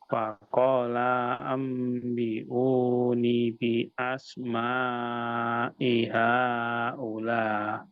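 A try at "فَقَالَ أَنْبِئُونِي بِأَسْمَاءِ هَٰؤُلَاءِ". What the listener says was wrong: Nah, masih kurang panjang Pak lanya.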